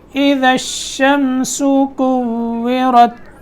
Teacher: واو میں ہونٹ گول ہوں گے اور را موٹا کر کے پڑھیں گے۔